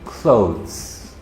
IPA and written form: klouðz (Clothes)